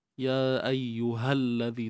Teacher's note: So, huruf alif mati jumpa lam mati disebut iltiqa' sakinain, iaitu pertemuan dua sukun. Jadi, sukun jumpa sukun tak boleh baca, dan di sini kita perlu gugurkanlah, okay, sukun yang pertama · mad asli dua harakat, keluarkan sedikit hujung lidah